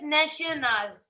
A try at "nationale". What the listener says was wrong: It's not national. The sound is not sh. It's nacio. Nacional. French is different.